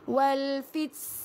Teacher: Ha keluarkan angin sedikit saja tuan puan. Jangan sampai keluar sin. Walfit. Ha kalau tuan puan rapatkan gigi, rapatkan gigi sangat-sangat kan maksudnya rapat sangat dia akan jadi sin.